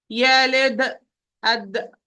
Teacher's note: This will cause the sound to have qalqala, which we say this sound is said, we call it qalqala, because it was stopped, it was blocked, the articulation point was closed, and then suddenly with a degree of force open, so the sound, not air, sound will be pushed by also a degree of force.